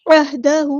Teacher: عین کو وسطی حلق یعنی مڈل تھروٹ سے ادا کرنا ہے، ہاں ہم نے سمپل ادا کرنا ہے، عہدہ، عہا نہیں کرنا، ہاں ساکن کو ہلانا نہیں ہے